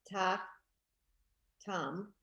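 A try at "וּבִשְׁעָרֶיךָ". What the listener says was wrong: Don't forget the v in the middle.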